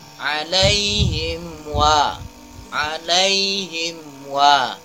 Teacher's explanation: Wow alaihim wa mim sukun bertemu dengan Wow itu izhar Apakah izhar syafawi mim nya jangan ada dengungan atau tekanan · Yang dijelaskan adalah mim sukunnya tanpa adanya dengungan.